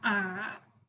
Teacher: the third tone is deep